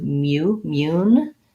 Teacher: mu mu has the glide ya in it so we don't do moon like m-o-o-n we do mu mune